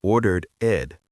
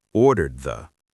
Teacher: The D at the end of ordered links directly into the word the